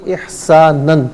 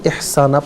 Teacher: اسے ہم پڑھیں گے احساناً، اور وقف کی صورت میں اسے احسانہ پڑھیں گے، اور کیونکہ دو زبر کی تنوین وقف میں الف سے تبدیل ہو جاتی ہے